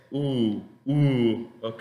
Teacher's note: la boca casi redonda, no tanto como la O